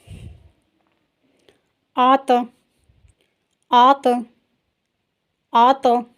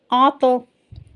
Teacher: زبان کو حلق کے قریب سے اوپر کی طرف موٹا کر کے اٹھاتے ہوئے پڑھیے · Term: تو ساکنہ